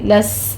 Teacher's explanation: سین میں سیٹی کی آواز سے کیونکہ حروف صفیریہ میں سے ہے، سیٹی کی آواز کے ساتھ ہمز کریں گے اس پر۔